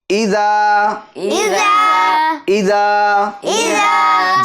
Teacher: دال کو ہم ایک الف کی مقدار کھینچیں گے چونکہ یہاں پر حرف مد ہے، یعنی الف مدہ ہے، اور الف مدہ کو کھینچ کر پڑھتے ہیں.